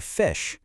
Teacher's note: To make that f f sound, you just let the air sneak past your top teeth and bottom lip. It's a really soft sound.